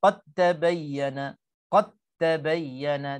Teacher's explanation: Dal qalqalah dah tak ada dah. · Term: idgham mutajanisain